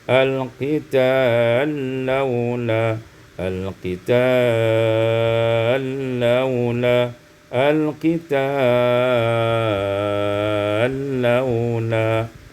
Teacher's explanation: diidghamkan lam pada lam menjadi al-qital laula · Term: idghamul lam fil lam